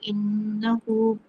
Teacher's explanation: آگے انہو نون مشدد ہے، اس کو جما کے پڑھیں گے، ہا کے اوپر الٹا پیش ہے، 1 الف کے برابر اس کو کھینچیں گے